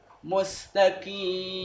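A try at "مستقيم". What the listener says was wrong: Belum. Coba qi. Masih kaf itu. Antum mundur sedikit. Qi.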